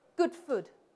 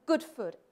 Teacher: if you come up to Scotland where I live people rhyme good and food